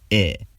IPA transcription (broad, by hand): e